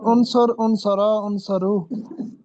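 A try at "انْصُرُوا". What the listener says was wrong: سواد پر پیش ہے۔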